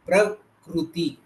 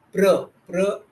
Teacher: जैसे प्रकृति में प्र का उच्चारण ये संयोग हो गया है। प और र, ये दोनों वर्ण के बीच में कोई स्वर नहीं है, इसीलिए ये दोनों एक साथ जुड़ गए